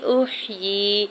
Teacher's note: احیی حمزہ کی پیش کو ح ساکن کے ساتھ ملائیں گے، یا کے نیچے کھڑی زیر 2 حرکت کھینچ کے ادا کریں گے